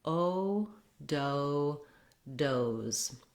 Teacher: the O will say O, which is the diphthong, the long American O